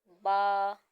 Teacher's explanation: जो है यह दोनों होठों के तर हिस्से से अदा होगा जब दोनों होठों के हमारे तर हिस्से आपस में मिलेंगे तो यह बा अदा होगा · با جو ہے یہ دونوں ہونٹوں کے تر حصے سے ادا ہوگا۔ جب دونوں ہونٹوں کے ہمارے تر حصے آپس میں ملیں گے تو یہ با ادا ہوگا۔